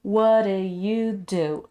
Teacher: reducing the do sound to almost zero